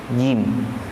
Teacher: Kalau jim itu bunyinya tepat di tengah lisan, bukan di ujung. Kalau ujung bunyinya zin.